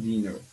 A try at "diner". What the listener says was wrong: It's not dinner here. Observe, there is only one N. It's diner.